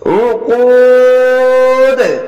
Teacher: প্রথমে 3 আলিফ টেনে পড়বেন, মাদ্দা আরজি দিয়ে কলকলা করবেন